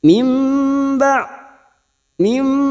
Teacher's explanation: bertemu ba namanya bacaan iqlab artinya membalik atau menukar cara membacanya membalikkan Nun atau tanwin menjadi mim ya tapi kita siap membunyikan huruf ba dan disertai mendengung selama dua atau tiga harakat